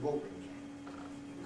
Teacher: But then when we add ing, well, it isn't ing, it's in, as I was saying, linking R, and we get water-in, and that schwa and R, of course, then can coalesce into syllabic R, and compression gives us plain R.